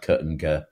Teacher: sounds like “kuh” and “guh” are said sort of further back in the mouth